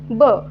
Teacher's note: ब अल्पप्राण आहे ओष्ठ आहे